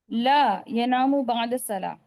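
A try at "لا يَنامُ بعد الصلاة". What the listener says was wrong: ला पर रुको यहाँ पर आपको जवाब कैसा देना, ला पर रुकना नहीं, ला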